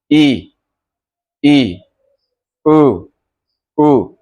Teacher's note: ये संवृत है तो संवृत में आपका मुंह एकदम बंद हो जाएगा।